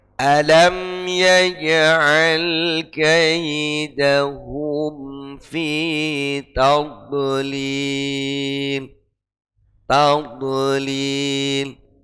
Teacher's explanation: Munculnya tawallud di huruf dod biasanya karena posisi makhrajnya tidak sepenuhnya sempurna. Ya, biasanya agak maju, sedikit menyerupai ke dal. Itu rawannya huruf dhad.